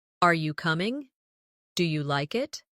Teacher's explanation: Another important element is intonation when asking questions. In English, our voice usually rises at the end of a yes or no question.